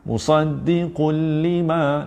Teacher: Yang ini tuan-puan, lam sabdu automatik tak dengung. Dan bila tuan-puan baca musaddiqul lima, tak payah masuk hidung.